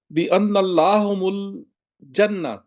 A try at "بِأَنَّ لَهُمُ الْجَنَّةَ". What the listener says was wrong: نہیں نہیں، ان لہم لہم الجنہ، ان لا تو ہے ہی نہیں یار۔